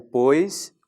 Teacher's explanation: É o ditongo, né? O encontro do O, vogal, mais o I, semivogal.